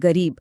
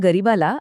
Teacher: मूळ शब्द आहे गरीब री दीर्घ आहे पण जेव्हा गरिबाला असं सामान्य रूप झालं तेव्हा री रस्व झाला